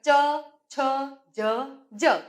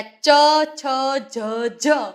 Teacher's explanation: જીભનો આગળનો ભાગ છે એ આ ઉપરનું જે તાળવું છે કઠણ તાળવું એ કઠણ તાળવાને ત્યાં સ્પર્શ કરે છે